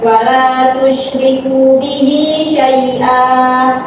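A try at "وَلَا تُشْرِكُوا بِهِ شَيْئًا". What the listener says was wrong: ada waw panjang wala tusyriku wala tusyriku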